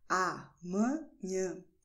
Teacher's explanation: amanhã is very, very nasal, because in Portuguese we do have a lot of nasal sounds · So you just touch the tip of your nose and you will notice that there is a vibration when you pronounce correctly amanhã with your nose · You see that it tickles a little bit because you're using your nose to speak